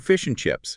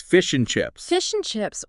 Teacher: The word and, for instance, is almost never fully pronounced. It gets reduced to n.